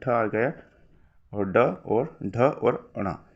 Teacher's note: ट के बाद में ठ आ गया और ड और ढ और ण यह सभी के सभी मूर्धन्य होते हैं